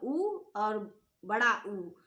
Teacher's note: उ और बड़ा उ जो है ये भी ओष्ठ से बोले जाते हैं